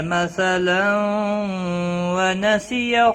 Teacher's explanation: مثلا تنوین کے بعد حروف یرملون کا واو آیا، ادغام باغنہ ہوگا